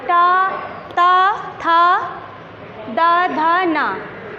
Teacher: इनको उच्चारित करने में हमारी जीभ जो है वो हमारे दांतों का स्पर्श करती है